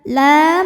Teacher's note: karena lam berbaris fathah berdiri. Maka dibaca panjang lamnya dua harokat. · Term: mad thobi'i